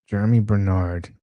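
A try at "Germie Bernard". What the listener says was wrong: not Jeremy. Jeremy, it's Ger.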